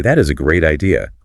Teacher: with a flat downward intonation and a slight pause, your brain instantly recognizes sarcasm